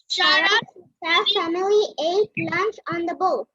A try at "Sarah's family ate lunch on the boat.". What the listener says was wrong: Yes, very good. Yes.